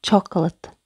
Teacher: Қалған буынның дыбыстары шуа болып кетеді. Шуа дыбысы.